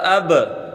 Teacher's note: اگلا حرف حمزہ با زبر اب، با پر قلقلہ ہوگا۔